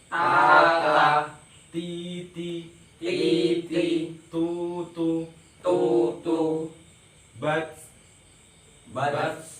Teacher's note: Ujung lidah dengan pangkal 2 buah gigi yang atas adalah tempat keluarnya ta, da, to · jadi kalau ta itu ada desisnya, tapi jangan sampai ta, ti, tu. Desisnya itu pelan aja